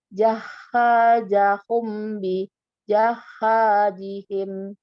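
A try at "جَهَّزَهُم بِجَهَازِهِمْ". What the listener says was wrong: Oke, yang H pertama itu nggak panjang. Jahazahum, jahazahum, za bukan ja, ya, za yang ini. Lalu bijaha, yang ini nggak pakai tasydid tapi panjang. Bijahazihim, coba.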